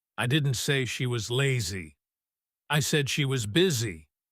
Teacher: Notice how the words lazy and busy would naturally be stressed strongly in this sentence because the speaker is contrasting these two specific words. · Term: contrastive stress